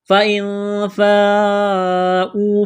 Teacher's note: نون ساکن کے بعد فا ہے، حروف اخفا ہے، غنہ کریں گے، آواز ناک میں چھپائیں گے ، یہ لمبی مد ہے، 4 الف کے برابر کھینچنا ہے،